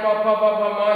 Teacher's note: प फ प भ म ये ओठ से छुआता हुआ है इसलिए ये ओष्ठ है